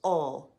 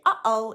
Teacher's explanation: It looks like a backwards apostrophe, but it is an actual letter in the Hawaiian alphabet. It indicates a glottal stop of air, similar to when we say uh-oh in English.